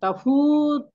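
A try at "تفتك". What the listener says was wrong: না, টান হবে না, তখন আর ওয়াওটা পড়ে যাবে, তায়ের উপর সুকুন হয়ে যাবে।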